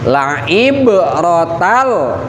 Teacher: Ib itu ba, ada ba sukun yang ba sukun itu salah satu huruf kolkolah. Jadi cara pembacaannya harus dipantulkan